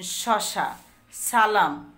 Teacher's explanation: এই ব্যঞ্জনগুলো দুটা বাক প্রত্যঙ্গ কাছাকাছি এসে বায়ু ঘর্ষণ সৃষ্টি করে উচ্চারিত হয়। যেমন শশা, সালাম, অর্থাৎ এই যে একটু ঘর্ষণ দিয়ে উচ্চারিত হয়। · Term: উৎস ব্যঞ্জন